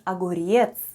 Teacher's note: the first sound is o it's unstressed and is pronounced as a